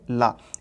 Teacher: एक होता है आपका रा और एक होता है ला, ये केवल आपके दंतमूल से आते हैं